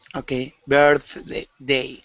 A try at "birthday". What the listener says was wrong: Okay, almost. You're rolling that R, saying birthday. Okay, the word is birthday.